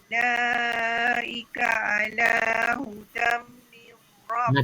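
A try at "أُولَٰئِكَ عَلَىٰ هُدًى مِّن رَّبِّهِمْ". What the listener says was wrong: Tak cukup lagi tu. Cukup. Dia hudam untuk mulut rapat. Hudam mir. Dua harakat dengar.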